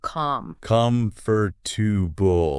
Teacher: The stress should be on that first syllable.